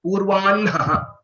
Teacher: the way to pronounce these letters, these combinations or these Sanyukta is to pronounce the Anunasika first and then the Hakara.